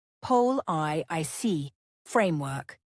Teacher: Stress the first syllable of policy and the first syllable of framework.